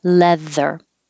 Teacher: the th is voiced so you need to have airflow plus voicing